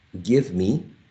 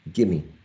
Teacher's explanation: V is not pronounced here in the reduced form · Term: elision of v